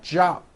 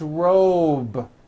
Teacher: It's not jop with an unvoiced P. Keep the voicing going throughout the whole word. Job with a voiced B ending.